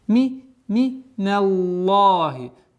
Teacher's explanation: Твердое произношение лям. В лафзуль джаляля с огласовкой фатха.